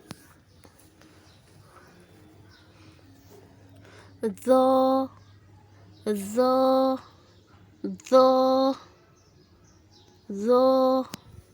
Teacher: جب زبان کی نوک ثنایا علیہ کے سرے سے لگے تو زو ادا ہوتا ہے۔